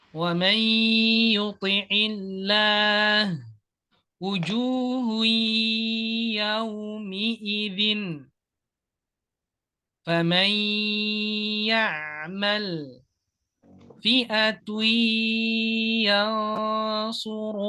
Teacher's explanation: ketika kita masuk ada suara dengung, ada suara yang keluar dari hidung. Contohnya, wa harus ada masuk ke hidung. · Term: idgham nakis